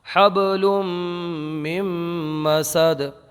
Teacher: من سے جو مم ہوا ہے مم یہی ادغام ہے